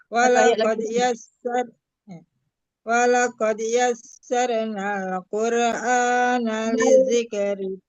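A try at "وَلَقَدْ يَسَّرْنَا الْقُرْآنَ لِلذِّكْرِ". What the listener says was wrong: Bu, walaqad yassarnal, kan ada lam mati di depan.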